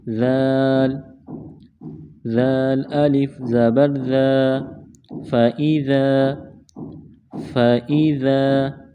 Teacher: ذال کو نرم پڑھیں گے، زبان تھوڑی سی باہر نکالیں گے۔